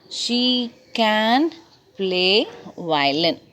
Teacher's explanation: We give a stress for she, play, violin.